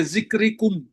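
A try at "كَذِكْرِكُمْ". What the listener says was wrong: یہ نہیں ہے، کاف کے اوپر زبر ہے نا. کا ذکرکم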